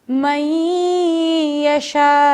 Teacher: نون ساکنہ کے بعد یا آ گیا تو ہم نون کو بالکل ختم کر دیں گے اور یا سے ملا دیں گے